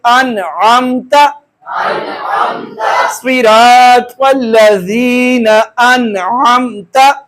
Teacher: قاعدہ ہمارے سامنے آ گیا کہ وہاں پر اظہار کریں گے، آواز کو چھپائیں گے نہیں بلکہ ظاہر کر دیں گے، غنہ نہیں کریں گے